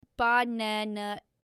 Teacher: we stress the second syllable, banana. If you stress it wrong, like banana, it sounds strange. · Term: word stress